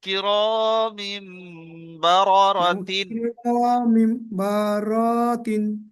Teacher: আসবেন না, এখানে নুন সাকিন নেই, তাই তানমিনকে মিমের দ্বারা পরিবর্তন করে। তাই তানবিনকে মিমের দ্বারা পরিবর্তন করে এক আলিফ পরিমাণ গুণনা সহ পড়তে হয় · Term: ইকলাব